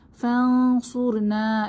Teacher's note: এখানে নুন সাকিনের পরে সোয়াদ এসেছে, তাহলে গোপন করে পড়তে হবে , ফানসুর, র মোটা, সুর না, না তে এক আলিফ টেনে